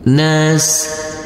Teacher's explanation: huruf sin yang bersukun ini tidak boleh dipantulkan karena ini adalah bukan bacaan qalqalah.